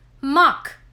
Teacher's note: the russian is never aspirated